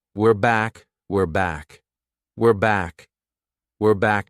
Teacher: notice how unstressed my pronunciation is? It sounds like we're not were. This is how native speakers say it at a natural pace.